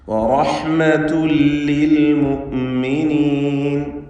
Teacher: റഹ്മത്തുൻ എന്നതിൽ തൻവീനിനെ ശേഷമുള്ള ലാമിലേക്ക് പൂർണ്ണമായും ലയിപ്പിച്ച് മണിക്കാതെ ഉച്ചരിക്കണം. ഇദ്ഗാം ബിഗൈരി ഗുന്നഹ് കാമിൽ.